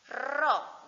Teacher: ujung lidahnya itu melengkung agar bisa keluar takrirnya, bisa bergetar. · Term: makhraj ro